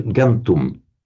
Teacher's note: the M before a T will automatically become an N.